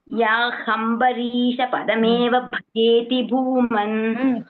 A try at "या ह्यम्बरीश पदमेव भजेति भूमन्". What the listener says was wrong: हम्बरी ले ह्यम्बरी. या ह्या ह्या ह्या அது யா அது வந்து ஹா மட்டும் கேக்குறது, யா கேக்கல. யா ஹ்யம்பரீஷ. அந்த ஹ்யா படிக்கும்போது சம்யுக்த அக்ஷரம்ல இட் இஸ் ஒன்லி ஹா ஹியரிங், யா கேக்கல.